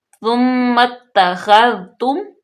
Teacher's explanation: خوا کو حروف مستعلیہ میں سے ہے پر پڑھیں گے، ذال کو بالکل نرمی سے